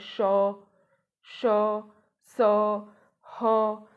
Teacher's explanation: जो मुख से वायु निकलती है वो रगड़ खाती हुई निकलती है, इसीलिए इन्हें ऊष्म व्यंजन कहते हैं।